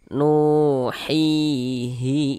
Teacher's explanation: Soalnya hi dibaca panjang, madu tabi'i panjang 2 harokat. Nuhihi ilaik.